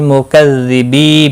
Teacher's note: بی یا مدہ ہے، 1 الف کے برابر کھینچ کر پڑھیں گے